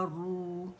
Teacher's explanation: را جو ہوگی وہ جب دمہ کے ساتھ ہوتی ہے تو موٹی پڑی جاتی ہے